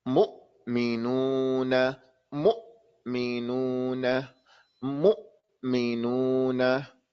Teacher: This hamza, you're stopping the sound and the air.